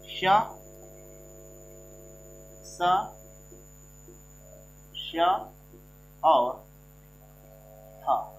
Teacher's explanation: इनको बोलने के लिए इनमें ऐसा लगता है कि काफी घसीट के साथ निकलते हैं, काफी समय लग जाता है इनको निकलने में, ठीक है ना। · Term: संघर्षी व्यंजन